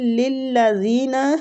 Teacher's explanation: تشدید ہے، لام کو لام کے ساتھ شدت سے ملائیں گے